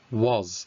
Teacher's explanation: it's not a S at the end, it's a Z, was